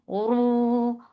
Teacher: Ra is heavy for Dhamma, circle your lips. Make it 2 counts long.